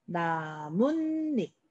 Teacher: 자, 여기서 봤을 때 없었던 앞에 니은, 뒤에 니은 들어가는 거 확인할 수 있죠? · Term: 니은 니은 첨가